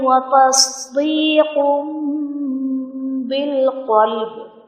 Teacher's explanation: یہاں پر تصدیق میں بھی تنوین کے بعد حرف با ہے، تو ہم تنوین کو میم ساکن سے بدل کر اخفا کریں گے۔